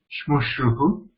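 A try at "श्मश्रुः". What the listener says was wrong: So there is no Visarga for Shmashru, just Shmashru.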